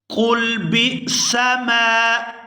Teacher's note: آگے با کو حمزہ ساکن کے ساتھ ملائیں گے تو جھٹکے کے ساتھ ادا کریں گے۔